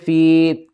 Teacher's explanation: یا ساکن سے پہلے زیر ہے، حروف مدہ ہے، کھینچ کر پڑھیں گے